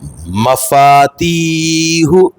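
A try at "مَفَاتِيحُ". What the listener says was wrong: تھوڑا سا فا کم ہو گیا ہے. مفاتیح. ہاں یعنی فا اور تی برابر کھینچیں گے.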